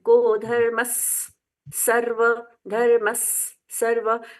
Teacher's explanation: को धर्मस सर्व डबल स जैसा सुनाई देना चाहिए विसर्ग है वहां पर को धर्म सर्व धर्म को धर्म सर्व धर्म बीच में एक आधा स ऐड करना है को धर्मस सर्व धर्मस सर्व अब ये जोड़ेंगे ना तो डबल सा हो जाएगा।